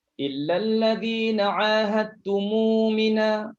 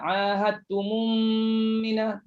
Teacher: Ingat bila silah mim jamak dah tak ada lagi idgham mislain. Jangan berdengung lagi. Jangan baca ahadtumum mina, tak ada dengung lagi.